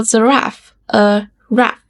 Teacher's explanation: little kids often call giraffe a raff because they leave off the unstressed syllable